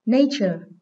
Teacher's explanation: Đây là danh từ có hai âm tiết, nên trọng âm dưới âm số 1.